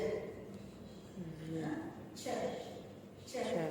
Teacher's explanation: Sounds are made by raising the blade of the tongue towards the part of the palate just behind the alveolar ridge. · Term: Palatal alveolar